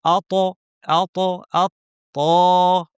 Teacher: উপর পাটির দাঁতের গোড়ায় লাগিয়ে ত উচ্চারণ করব। আত, আত, আত, ত, আত, তু, আত, তুই, আতআমাহুম, আত এবং একটু ত সাকিন অবস্থায় আসলে একটু কম্পন হবে, এর নাম হচ্ছে কলকলা। · ত সাকিন অবস্থায় আসলে একটু কম্পন হবে, এর নাম হচ্ছে কলকলা। আত এবং এখানে কোনো বাতাস থাকবে না। ত উচ্চারণের সময় যেন কোনো বাতাস না থাকে।